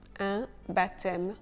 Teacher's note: Le P de baptême est silencieux.